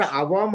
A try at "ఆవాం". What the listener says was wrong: ఇప్పుడు అవాం కాదు first point, ఆవాం. ఆకి దీర్ఘం ఆవాం.